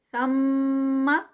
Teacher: اور سما نہیں ہے یہ سما، اس کا بہت دھیان رکھنا ہے کہ آخری حرکت لمبی نہیں ہوگی کیونکہ حرکت ہے یہ، مد نہیں ہے